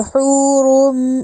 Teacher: اب حو کو ہم نے لمبا بھی کیا ہا کو کیونکہ واو مد آئی ہے ، اور روم، اب روم کا رو پر کر کے پڑھا